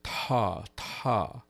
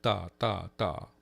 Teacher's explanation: you hold your glottis wide open. It's called spread glottis in order to let a lot more air through.